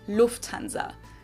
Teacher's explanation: So the emphasis is on the first syllable.